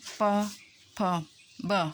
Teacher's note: ऐसे वर्ण हैं जो ओठ यानी ओष्ठ, होठ को छूकर ये ध्वनियाँ बाहर आती हैं